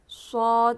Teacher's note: صاد واپس مستعلیہ حرف ہے، اس کو پر پڑھیں گے، منہ بھر کے پڑھیں گے